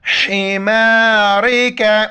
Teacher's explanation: چھوٹی کاف ہے، باریک پڑھیں گے اور حا کو گلے سے ادا کرنا ہے